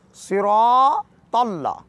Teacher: इस मुकम्मल जुमले को पढ़ने का तरीक़ाकार स्वाद को मोटा करके पढ़ना है, सिरातल्ला, और इसी तरह जैसे कि स्वाद को मोटा पढ़ना है, अरबी में इसको कहते हैं तफ़ख़ीम, और इंग्लिश में कहा जाता है बोल्ड पढ़ना, मोटा और भारी पढ़ना, पुरहुजम पढ़ना।